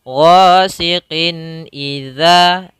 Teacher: Maka hukum tajwidnya kita namakan dengan izhar. Ghasiqin, harus jelas tanpa ditahan, maka cara membacanya tidak boleh tahan, tidak boleh ghasiqin idza, tapi langsung saja ghasiqin idza, za sama tadi makhrajnya.